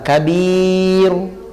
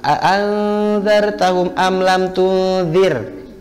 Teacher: sukunnya itu bukan sukun asli tapi disukunkan, maka dia terdengar lebih tebal kabiru. Ya beda dengan kalau dia sukunnya sukun asli anzartahum am lam tunzir, dia tarkik.